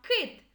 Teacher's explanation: кит перший звук к який він приголосний твердий